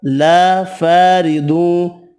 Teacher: را زیر کی وجہ سے باریک پڑھیں گے۔ ضاد حروف مستعلیہ پر پڑھیں گے، ادغام مع الغنہ ہوگا۔